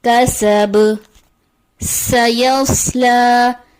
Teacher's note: با حرف قلقلہ میں سے ہے تو با کی آواز پلٹ کر واپس آئے گی